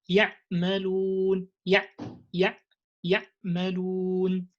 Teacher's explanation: they tend to make the ayn like the sound of hamza, and they cut it off when they pronounce it, especially when it's in the state of sukun. They would say يعملون يعملون, and you moved now from the like smooth quality, because one of the qualities of ayn is that is between بين, between the smooth letters and between the strong letters.